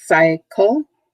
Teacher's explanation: over again in a pattern notice it's two syllables cycle and the emphasis is on the first syllable